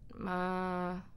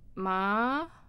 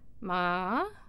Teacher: If it's flat, ma, that means mother. If it is going up, ma, maybe, that means numb. My finger's numb.